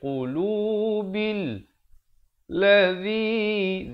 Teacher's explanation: qulubil ladzi, zi di ujung lidah